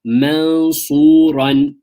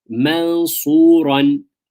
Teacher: Ikhfa on the noon. Okay, you almost hide the noon. There's not clarity of the noon.